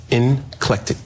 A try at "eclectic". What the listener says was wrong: It's eclectic. there's no N in it.